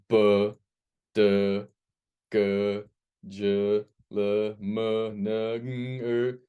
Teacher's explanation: all of these sounds create a vibration in our throat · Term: voiced sounds